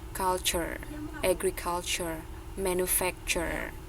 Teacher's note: dia itu istilahnya kalau dalam bahasa Indonesia dia itu melebur jadi bunyi tehnya itu teh teh teh itu bunyinya itu melebur menjadi chah gitu